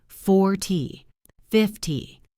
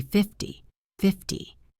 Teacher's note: For 10 numbers like 40, 50, 60, the stress is at the beginning.